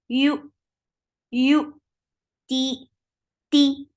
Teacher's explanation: You are lifting the tongue, middle part of your tongue towards your palate, but you are not touching it. That's why the sound of ya is very soft.